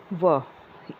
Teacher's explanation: दांत और जीभ के स्पर्श से बोले जाने वाले वर्णों को बोला जाता है और होठ के योग से जिनको बोला जाता है वो होते हैं व, इसको बोलते हैं दंत्य ओष्ठ। दांत, जीभ और ओष्ठ, दंत्य ओष्ठ भी बोलते हैं, इसके योग से व बोला जाता है।